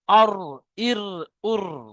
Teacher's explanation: তো এইরকম ভাবে জিভের আগার উল্টো পিঠটা উপরের তালুর সাথে যখন লাগবে তখন অটোমেটিক জিভটা ঘুরবে একটু হালকা, আওয়াজের মধ্যে একটা ঘোরার ভাব আসবে